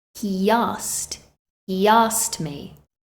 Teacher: between the he and the asked we insert a y